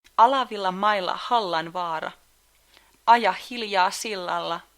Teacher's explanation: Notice how the emphasis is always on the first syllable of the word.